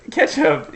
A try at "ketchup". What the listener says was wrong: No, see, you're saying it weird. There's no A. Have you seen Heinz Ketchup? No, it's TCHUP. No, see, you're doing that weird thing where you say catsup.